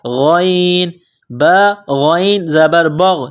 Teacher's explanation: غین جس طرح انسان گلے سے بلغم نکالتا ہے اس طرح اس غین کو نکالیں گے